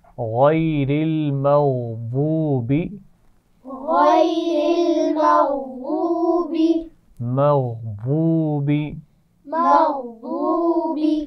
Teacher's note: غین موٹا ہے، ضاد کے مخرج کا خیال رکھیے. زبان کے کنارے دائیں یا بائیں کسی ایک طرف سے اوپر کی داڑھوں کے ساتھ لگا کے ادا کیا جاتا ہے